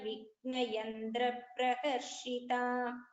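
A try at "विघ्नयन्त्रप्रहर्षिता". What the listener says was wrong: So first line Bhagini, just listen to this gha pronunciation. It is Mahaprana. Mahaganesha Nirbhinna Vigna Yantra Praharshita.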